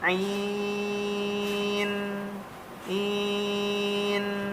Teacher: ada huruf nun yang disukun maka harus ada mengalir sedikit suaranya